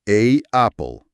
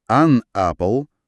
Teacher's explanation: Представи си, че трябва да кажеш A apple. Получава се едно гърлено спиране, един малък спазъм между двете гласни.